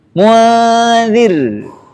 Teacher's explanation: Kemudian di sini disebutkan ikhfa harfi berartinya di sisi huruf. Ah, belum menempel ujung lidahnya ke huruf yang diikhfakan atau ke posisi ikhfa itu